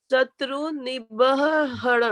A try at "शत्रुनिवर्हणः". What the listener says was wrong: निवर, निवर जो ऊपर में र की मात्रा होती है ना, वो पहले बोली जाती है। निवर, हाँ, और विसर्ग को पूरा शुद्ध बोलिए, निवर्हणः।